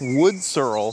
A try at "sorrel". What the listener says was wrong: Sorrel. Sorrel. You're putting the emphasis on the wrong syllable.